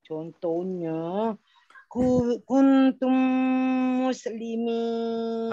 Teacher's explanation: Idgham memasukkan mim yang pertama ke dalam mim yang kedua. Dengungnya 2 harakat. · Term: idgham syafawi